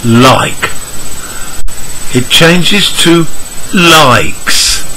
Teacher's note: We add a consonant sound s and make the overall sound longer. We don't add a syllable.